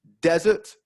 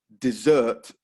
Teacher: the only difference between the two words is the stress desert first syllable dessert second syllable